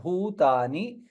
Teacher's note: सर्वाणि यतः सर्वाणि there is doubles are there यतः सर्वाणि भूतानि भा महाप्राण and ऊकार दीर्घ